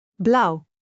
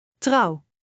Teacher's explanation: It starts deep with, u, opens to uh, and closes softly with we. Keep your lips rounded throughout this glide.